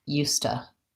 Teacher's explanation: in casual speech will say it more like ustah so it kind of sounds like you stuck with an ah sound